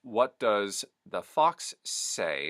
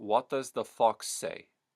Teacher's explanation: the general resonance that I'm getting from the Puerto Rican accent is a big rounding in the mouth bottom to top and then a thin exit pattern so you have a very round sound and it comes right